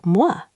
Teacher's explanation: Your lips start very rounded, then relax.